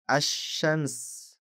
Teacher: Dan ini sedikit istimewa karena jenis al ini Anda juga perlu mengabaikan huruf lamnya pada al tersebut seperti ketika mengucapkan kata asyams. Perhatikan bagaimana kita menghilangkan huruf lam pada kata asyams. Jadi ini berarti jika Anda menghubungkan kata asyams ke kata sebelumnya, Anda tidak hanya akan menghilangkan lam dari asyams, tetapi Anda juga menghilangkan hamzah wasalnya. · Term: lam syamsiyah, alif lam syamsiyah